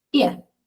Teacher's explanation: esa A la estoy pronunciando como schwa